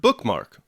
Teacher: a two- syllable foot consisting of two stressed syllables the word bookmark for example can be read as a sponde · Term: spondi